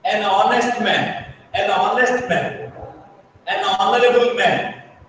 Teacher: We are making the H silent. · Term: H is silent